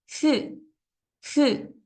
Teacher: Solo hay una pequeña fricción entre mis dientes superiores y los inferiores y escapa un poquito de aire. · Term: sonido de shu